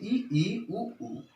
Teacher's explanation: इन ध्वनियों को बोलते समय मुख द्वार अल्प मात्रा में खुलता है, यानी बहुत कम मात्रा में खुलता है। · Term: समृद्ध स्वर